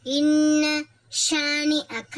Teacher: சத்து பெற்ற நூன் இருக்குமா அதனால இதை வந்து நல்லா அழுத்தி குன்னா செய்யணும்